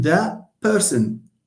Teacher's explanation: What we have actually is the disappearance of the t sound. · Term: deletion